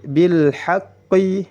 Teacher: Haqqi bil haqqi. Perhatikan qaf bertasydid ditahan 1 harakat karena pada dasarnya setiap huruf yang bertasydid menghimpun 2 huruf